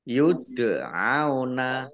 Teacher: dal sukun bacaan kolkolah atau dibaca memantul ditampakkan pantulannya.